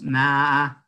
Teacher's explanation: hay una especie de laringización muy débil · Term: laringización débil